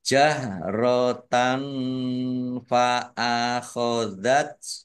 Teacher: Fathah tanwin bertemu dengan huruf fa, bacaan ikhfa dibaca samar-samar